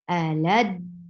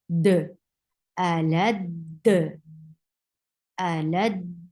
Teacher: So you are holding the first dal. You are bringing sifa of shidda over there, and applying qalqala at the last dal. Alad. Look how I'm holding the dal when it is attached with lam.